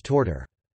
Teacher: The phoneme /θ/, and some /ð/ merged to /t/